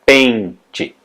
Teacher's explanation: a sílaba mais forte é pen, mas não tem acento, né?